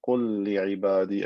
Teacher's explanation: again merging lam into lam to create one lam with shadda